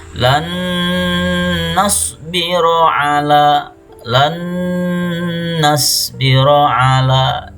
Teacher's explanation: Jadi nunnya bergabung dengan nun selanjutnya. Nun sukun digabung atau dimasukkan ke nun setelahnya.